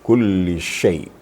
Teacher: Shin itu sifatnya kan tafashi. Tafashi artinya kalau di bahasa Indonesia agak menyebar katanya. Menyebar. Jadi hembusan atau hamasnya menyebar.